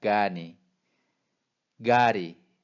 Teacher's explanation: 가 했을 때 공기가 안으로 빨려 들어가면서 나는 발음이 납니다